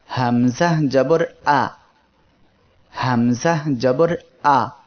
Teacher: এ অক্ষরের মাখরাজ হলো কণ্ঠনালীর শুরু হইতে হামজা উচ্চারিত হয়। এটা হলো কণ্ঠনালী, শুরু এই জায়গা, মধ্যখান এই জায়গা, আর শেষ এই জায়গা।